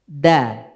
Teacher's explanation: Dal itu di ujung lidah dengan pangkal gigi seri atas. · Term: huruf dal